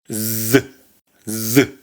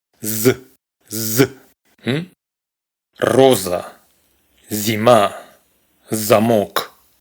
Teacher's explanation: Se pronuncia z. Recordemos, es sonora. vibran las cuerdas vocales.